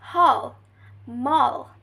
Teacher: This third types of back vowels is produced by raising the tongue to a mid position, directing the back of the tongue towards the velum and rounding the lips. It's in American English is a short vowels, while in British English it's a long vowel. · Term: mid-back rounded vowels